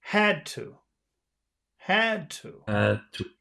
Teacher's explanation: even though you're not really pronouncing the D, it's still there. And that means that you have to pronounce the A in a very long way.